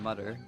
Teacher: I use a d or a t sound instead of a th sound.